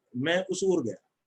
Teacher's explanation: ऐसे ही ओ को अगर मैं छोटा, मैं उस ओर गया, तो अगर मैं 2 चुटकी के बजाय 1 चुटकी की तरह से बोलने की कोशिश करता हूं, कम अवधि में बोलता हूं, तो ओ मुझे ऊ जैसा होगा, मैं उस ओर गया ऐसा सुनाई देगा।